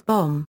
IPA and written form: bõ (bom)